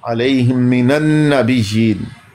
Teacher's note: मीम साकिन के बाद मीम, इदगाम, इदगाम में शफ़वी